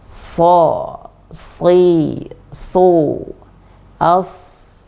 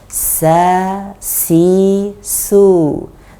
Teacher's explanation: Kemudian sin ini lidah belakang tidak naik ketika melafadzkan huruf sin. Kalau sod maka lidah belakang naik ketika melafadzkan huruf sod. Kesimpulannya kita wajib atau harus atau berusaha sekuat atau semaksimal mungkin untuk menaikkan lidah belakang ketika melafadzkan huruf sod.